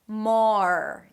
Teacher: Technically it's the 'father' vowel, but a bit more rounded because it has the R right after - "maar" "maar". Notice that you're not bringing the tip of the tongue high up too soon so it sounds like 'merkit'.